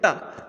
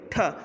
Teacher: इसमें जिह्वा हमारी थोड़ा सा मुड़ती है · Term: मूर्धन्य वर्ण